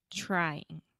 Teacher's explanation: a great example of the TR sound in English trying right so you start off with the CH sound just like Chiago